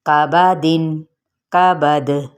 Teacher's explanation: دال بھی حروف قلقلہ میں سے ہے، ساکن ہونے پر اس کو بھی ہلایا جائے گا یعنی قلقلہ کیا جائے گا